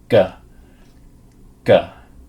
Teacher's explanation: the tongue is going to the back of the mouth